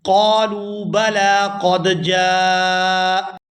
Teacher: یہاں حمزہ پر ہم نے وقف کیا، اس پر زبر تھی تو وقف کی وجہ سے ہم نے اس کو ساکن کر دیا